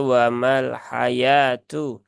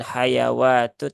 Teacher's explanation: Wawunya tidak dibaca. Jadi ini dianggap tidak ada begitu.